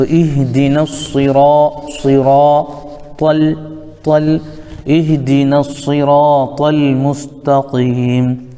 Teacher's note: اب یہاں پہ یہ الف بھی گر جائے گا، اور الف لام چونکہ حروف شمسی کے شروع میں ہیں اس لیے الف لام کو نہیں پڑھیں گے، ڈائریکٹ نون کو صاد میں ملا دیں گے، تو اہدنس، اہدنس، اس کے بعد را ہے الف مدہ، تو اس را کو پر پڑھیں گے، اور یہ طا بھی حروف مستعلیہ میں سے آتا ہے، اس کو بھی پر پڑھیں گے